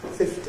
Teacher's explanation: A rise on the “ty”. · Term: Fall-Rise